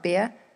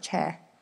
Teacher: particularly for the younger New Zealand speakers, there's little difference between ear and air sounds, so bear can sound like beer, and cheer sounds like chair.